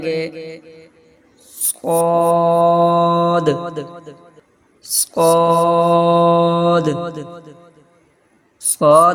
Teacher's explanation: ادا کرتے وقت زبان کی نوک جب اوپر اور نیچے کے اگلے دونوں دانتوں کی نوک کی طرف والے آدھے حصہ سے لگے تو صاد ادا ہوتا ہے